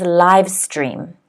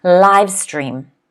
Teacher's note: The stress is on the first syllable because the apostrophe is before the first syllable in the phonetic spelling, okay?